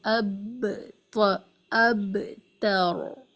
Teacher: با کا قلقلہ یہ ہے کہ دونوں ہونٹوں کو ٹائٹلی جوائن کر کے ملا کر پھر کھولیں، اب اب تر، اس طرح۔